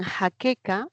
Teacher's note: Y en jaqueca aparece este sonido ja, la fricativa, la oclusiva, que son pelares, ¿no? Son sonidos tanto oclusivos, una K es oclusiva y el otro es fricativo.